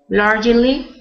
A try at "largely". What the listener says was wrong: So instead of largely, it's just 2 syllables. So you just say largely.